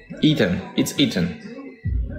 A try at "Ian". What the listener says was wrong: Ethan? Where'd the T come from? Ian? Ian, I-A-N.